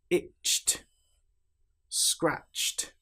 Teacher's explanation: we don't pronounce the e sound at all. The t is almost like an extra consonant that links directly to the consonant before it.